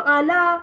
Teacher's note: Kalau ala, ya tanpa titik tu dia berfungsi sebagai alif. Makanya bacaannya di situ ala mad asli. Buat tak ada bunyi ya langsung.